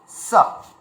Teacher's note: কেননা ছ উচ্চারণ করার সময় তালু দিয়ে উচ্চারণ আসে। আর স উচ্চারণ করার সময় দাঁত থেকে উচ্চারণ আসে। জিবটা গিয়ে দাঁতে ঠেকবে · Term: দন্তস